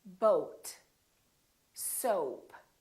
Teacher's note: So it's actually two sounds, it's O and U together. So you have to move your mouth from O to U